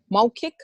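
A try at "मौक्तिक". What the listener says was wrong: Maukika. You cannot cut the last vowel.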